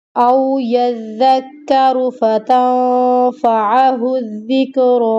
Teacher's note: یہاں پہ او کی آواز نہیں آنی چاہیے، حروف لین ہے، نرمی کے ساتھ ادا کرنا ہے۔